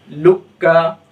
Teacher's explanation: لام کو ڈائریکٹ کاف سے ملاتے ہیں، ٹھیک ہے۔ تو اسی وجہ سے اس کو کیا کہا جاتا ہے، ادغامی متقاربین کہا جاتا ہے۔